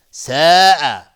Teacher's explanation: مد واجب متصل به مقدار 4 تا 5 حرکت وجوبا مد میخواد